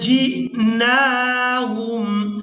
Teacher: وَلَقَدْ جِئْنَاهُمْ، جیم کو حمزہ ساکن کے ساتھ ملائیں گے تو جھٹکے کے ساتھ ادا کریں گے۔